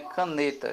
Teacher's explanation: Nós temos que a letra K é uma sílaba fraca, o NE é a sílaba forte, e por isso essa sílaba forte é chamada de sílaba tônica, e o TÁ é a sílaba átona, certo?